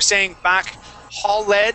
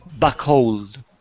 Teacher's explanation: but you are saying back holed and pronouncing that e d we want to go from that L and jump straight to that D sound